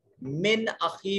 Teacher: نون ساکن کے بعد حمزہ جو ہے یہ حروف اظہار میں سے ہے، نون کو ظاہر کر کے پڑھیں گے